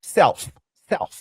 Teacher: C'est comme si le L était muet.